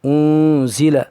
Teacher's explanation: نون ساکن کے بعد حروف اخفاء میں سے زا آ رہا ہے، اس لیے نون کو ناک میں 1 الف کے برابر گنگناہٹ کے ساتھ ادا کریں گے